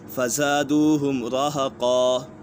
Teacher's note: قاف پر دو زبر ہیں، اور قاف حروف مستعلیہ میں سے ہے، قاف بھی پر ہے۔ جب یہاں وقف کریں گے تو دو زبر کو الف سے بدل دیں گے اور ایک زبر پڑھی جائے گی۔